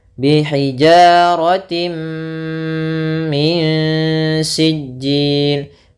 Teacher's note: Idgham bi gunnah nanti itu khusus di sini, yaitu adanya tanwin bertemu dengan mim, ini idgham bi gunnah. Yaitu jelas masuk tanwinnya ke mim.